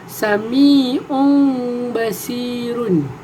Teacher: Iaitu sebutan yang secara tersembunyi. Cara bacaan ialah kedua-dua bibir kita tidak bersentuhan apabila menyebut mim itu. So, saya akan bagi contoh bacaan saya ialah Sami'un basirun.